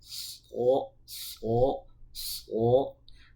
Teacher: Nah, shad itu ketika membunyikan huruf shad jangan terbaca huruf sin, ya. Bedakan shad itu huruf tebal karena terangkat pangkal lidahnya ke langit-langit, jadi dia menebal, so. Sedangkan sin itu huruf tipis karena pangkal lidah kita tidak terangkat.